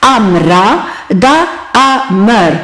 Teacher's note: არის ამრა და ამრ ამ მერში ხაზგასმულიც არის ისა ხმოვანი შუაში შუაში მდგომი ხმოვანი რომელიც გახლავთ ეგრეთწოდებული შვა ანუ ნეიტრალური ხმოვანი